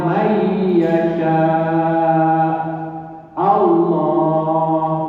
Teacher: nun mati ketemu dengan iya, masuk kepada iya. Ini masuknya pelan-pelan. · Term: idgham biguna